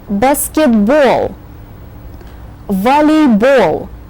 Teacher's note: you have to save your breath for the very last syllable in this word which carries a very strong accent